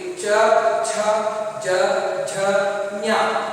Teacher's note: ಹಾಗೆಯೇ ಚವರ್ಗ, ಇವನ್ನ ತಾಲು ಅಂತ ಕರೀತೀವಿ. ತಾಲು ಅಂದ್ರೆ ಹಲ್ಲಿನ ಮೇಲ್ಭಾಗದ ಹಲ್ಲಿನ ಹಿಂಬದಿಯಲ್ಲಿ ಒಸಡಿನ ಸ್ವಲ್ಪ ಮೇಲ್ಭಾಗದಲ್ಲಿ ಈ ಅಕ್ಷರಗಳು ಉಚ್ಚಾರಣೆ ಆಗುವಾಗ ನಾಲಿಗೆ ಸ್ಪರ್ಶವಾಗುತ್ತೆ.